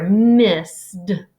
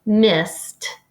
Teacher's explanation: The ed takes on the T sound.